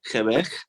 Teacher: La L suena como una consonante sorda, como que si estuviéramos mordiéndonos la lengua